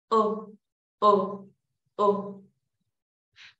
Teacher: Acá tenemos dos maneras de pronunciar la U. Cuando veas así que es el símbolo como más anchito, es porque es una O, O. Mira que no cierro tanto la boca.